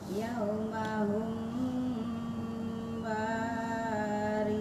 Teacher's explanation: Mim sukun ketemu ba disebut ikhfa safawi, cara bacanya samar dan dengung.